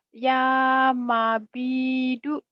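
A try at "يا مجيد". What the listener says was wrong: Bukan mabi, maji. Ya Ya Majidu.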